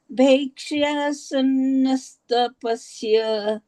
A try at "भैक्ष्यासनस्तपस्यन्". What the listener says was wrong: बस एक बात का आपको ध्यान रखना है, तपस्या न का उच्चारण भी हल्का सा आना चाहिए, भले वो हलंत के साथ है। भैक्षासनस्तपस्यन्, भैक्ष्या भैक्षासनस्तपस्यन्